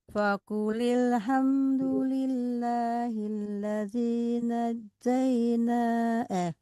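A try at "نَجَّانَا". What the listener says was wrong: Hati-hati bukan najjai tapi panjang ke atas najjana.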